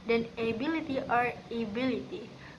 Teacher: ability or ability, which emphasizes the second syllable